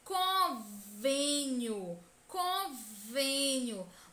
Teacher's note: mostra que a sílaba tônica deve ser pronunciada com o som fechado, com o som para dentro